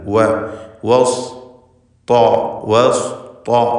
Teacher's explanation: സ്വാദ് ത രണ്ടും തഫ്ഖീം ചെയ്ത് വെച്ചിരിക്കുക. ശേഷമുള്ള അക്ഷരങ്ങൾക്കൊന്നും തഫ്ഖീമില്ല.